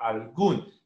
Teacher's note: la mayor elevación de voz está en la U, en la última sílaba, algún. Y como termina en N o termina en S, se coloca la tilde.